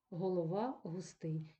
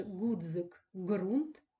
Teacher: г ми з вами знаємо що вони утворюється в різних місцях звук г український до якого ми з вами звикли це звук глотковий звук Ґ проривний